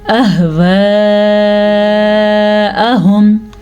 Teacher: اگر یہ 2 سے 3 سیکنڈ تک ہے تو یہ 3 سے 4 سیکنڈ تک لمبی کی جاتی ہے. تقریباً 4 سیکنڈ تک یہ لمبی کی جاتی ہے. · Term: مد